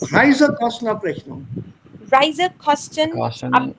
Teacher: So the stress is only on the Reise here.